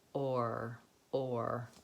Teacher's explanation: making sure you have a nice round O and a nice tight back R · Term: American R